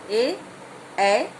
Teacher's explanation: कंठ और तालु के स्पर्श से जो वर्ण बोले जाते हैं वो है ए, स्वर है ये हमारे। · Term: कंठतालु